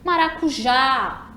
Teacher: identificamos que a sílaba tônica é a última, né? Começando dali do já. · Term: oxítona